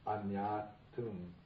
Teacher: the long A becomes a short A, and the N gets doubled, so it becomes anyatum.